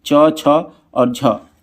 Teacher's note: च, छ और झ क्या हो जाएगा? ये तालव्य से बोले जाते हैं